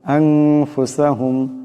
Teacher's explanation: পড়তে হবে আনফুসাহুম এখানে নুন সাকিন নুন সাকিনের উপরে ফা আছে ফা ইকফার হরফ এখানে ইকফার একের পরিমাণ গুন্না হবে